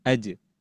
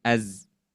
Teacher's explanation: jim nanti masuknya sifatnya itu ke syiddah yaitu yang tertahan